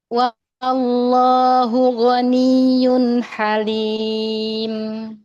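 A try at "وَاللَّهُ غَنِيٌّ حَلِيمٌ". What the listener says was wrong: mumtaz.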